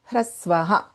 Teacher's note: this visarga always follows the swara of the letter which comes behind it